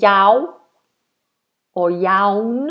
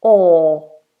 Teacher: the tongue is down. There's a big space inside the mouth and the sound is placed at the back.